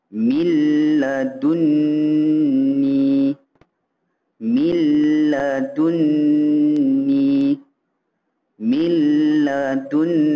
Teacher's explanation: nun mati terus masuk ke dalam huruf lam tanpa dengung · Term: idgam bilagunnah, idgham bila gunnah